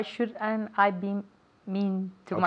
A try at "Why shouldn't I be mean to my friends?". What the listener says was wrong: una vez más, pero júntamelo.